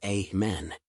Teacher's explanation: In amended, men is the stressed syllable the and the dead at the end are unstressed a men.